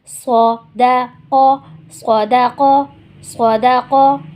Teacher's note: صاد موٹا ہوا، دال نہیں ہوا، قاف موٹا کرنا ہے · صاد زبر صا، دال زبر دا، صودا، قاف زبر قا، صدقا۔ اب دیکھیے یہاں پہ صاد موٹا حروف بھی ہے، سیٹی والا حروف بھی ہے، اس کو ہمیں موٹا بھی پڑھنا ہے، سیٹی کے ساتھ بھی پڑھنا ہے۔ دال سمپل ہے، جیسے اردو میں دال ہوتا ہے اسی طرح عربی میں بھی ہے۔